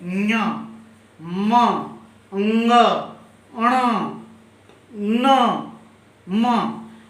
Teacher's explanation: इन 5 वर्ग का जो अंतिम वर्ण है न्य म अंग अण न, इन वर्णों का उच्चारण नाक से होता है। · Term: नासिका